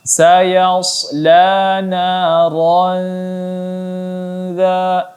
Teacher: di dalam dengungnya harus ditipiskan karena huruf dha ialah huruf yang tarqiq, huruf yang tipis maka ditipiskan juga bunyinya.